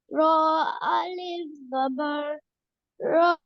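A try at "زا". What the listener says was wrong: This is za. This is not ro. Za alif zabar za.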